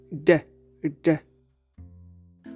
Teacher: To produce it, you must literally tap the tip of your tongue against the alveolar ridge or gum line right behind your teeth. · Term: voiced alveolar tap